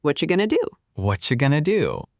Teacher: The T and the Y smush together and make a ch sound. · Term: assimilation